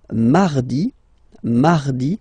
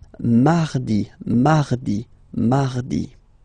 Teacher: So you can hear that you don't pronounce it that strongly, this R.